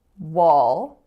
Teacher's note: United States so two syllables the first one is wall so you have the aw low back vowel going into a dark L